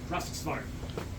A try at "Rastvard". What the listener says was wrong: There's more S's in there.